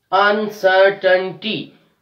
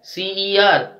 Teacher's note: We are stressing on sir, C-E-R. This is the third from the last syllable.